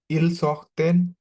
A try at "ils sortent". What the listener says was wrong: না, আমি বলেছিলাম যে ইল এল প্লুরালের কনজুগেশন থেকে সব সময় ইএনটি মিউট থাকবে, ইএনটি উচ্চারণ করা যাবে না। তাহলে আপনার উচ্চারণটা আসবে টি পর্যন্ত।